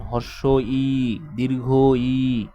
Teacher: জিহ্বা কোথায়? সামনেও আসে এবং জিহ্বা উপরেও ওঠে। এই জন্য এই বর্ণ দুটাকে বলা হয় উচ্চ সম্মুখ স্বরধ্বনি, উচ্চ সম্মুখ স্বরধ্বনি।